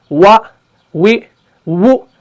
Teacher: जब आप अदा करेंगे तो आपने होंठों को गोल करना है, पूरा होंठों को नहीं चिपकाना है, तब जाके हरफ वाव अदा हो जाता है